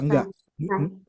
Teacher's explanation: ketipisan huruf sin itu berasal dari ujung lidahnya. Ujung lidah nempel ke gigi seri bawahnya gitu ya.